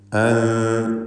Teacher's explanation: അൻത ഈ പദത്തിലെ സാക്കിനത്തായ നൂനിനെ ഇഖ്ഫ ഹഖീഖി നൽകി മറച്ചു മണിക്കണം. അവ്യക്തമാക്കി മണിക്കുക.